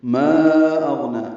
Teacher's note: ما اغنى، الف مدہ کے بعد حمزہ آنے کی وجہ سے مد منفصل ہے۔ ما کو 4 حرکات لمبا کرنا ہے اور الف کا مخرج حلق کا خالی حصہ ہے۔ اغنا میں حمزہ اقصی حلق سے ادا ہوگا، واضح طور پر ادا کریں گے، غین سے ملائیں گے، غین ساکن ہے، اس پہ اظہار ہے، نون کو 2 حرکات لمبا کرنا ہے، کھڑا زبر ہے، یعنی پڑھنا۔